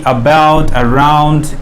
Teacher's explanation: অ্যাবাউট, অ্যারাউন্ড, এগুলো উচ্চারণ করতে গিয়ে আমাদের এই শোয়াটা ইউজ হয়